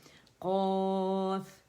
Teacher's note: اس کے لیے منہ کھولیں، جڑ کے پاس سے منہ کھلے گا آپ لوگوں کا، الجوف کھلے گا تو آپ کی جو زبان کے جو اقص اللسان ہے، جڑ ہے وہ اوپر جائے گی، تالو سے نرم سے لگے گی تو قاف ادا ہوگا، اور مد کی بلندی بھی فیل ہونی چاہیے آواز میں.